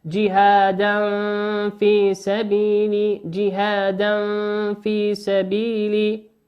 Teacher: جهادا تنوين أتى بعده حرف الفاء، والفاء من حروف الإخفاء